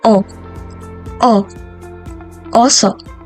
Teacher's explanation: ang patinig na o ay nabibilang din sa palikod na Pababa na posisyon ng bahagi ng dila